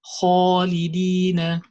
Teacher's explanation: So the kha is heavy, and also the alif after kha is heavy.